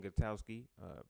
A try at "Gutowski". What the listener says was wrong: It's Gutowski, by the way. You said Gutowski. There's no W. It's just Gutowski.